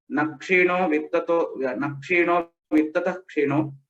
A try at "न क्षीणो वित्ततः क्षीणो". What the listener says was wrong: Nakshino vittatah kshino. That visarga has to be told completely because next letter is ksha.